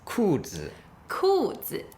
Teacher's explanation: Fourth tone and a neutral tone